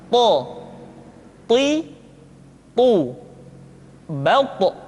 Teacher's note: ketika tha diucapkan suara kita terdengar menebal · Tho diucapkan dengan menyentuhkan ujung lidah dengan gusi-gusi dua gigi seri bagian atas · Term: huruf th